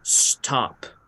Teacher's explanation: Termina en la P. Stop. No tiene voz. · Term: consonantes sin voz